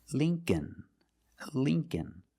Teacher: The dictionary shows it as a short I, the sound I, like thin. But it's the long E.